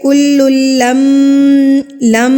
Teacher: میم کی آواز کو ہم نے ناک میں روک کے رکھا ایک حرکت کے برابر